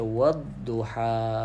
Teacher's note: Dia adalah dha. Tebalkan sedikit wad. Kita naikkan sikit dari segi sebutan huruf dha tu.